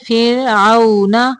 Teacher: را ساکن کے پیچھے زیر ہے، را کو باریک پڑھیں گے